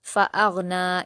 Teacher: بعد فا ہے تو یہاں حروف اخفا ہے فا، اس لیے ہم لام کی تنوین کو ناک میں چھپا کر غنہ کے ساتھ پڑھیں گے · پر الگ الگ حرکت ہے اور غین پر جزم ہے تو حمزہ کو غین سے ملا کر بنا قلقلہ کے پڑھیں گے